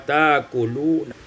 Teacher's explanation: Pada ayat 91, ta'kuluna ibdalul hamzati alifan, ditukar hamzah dengan alif sehingga kita baca ta'kuluna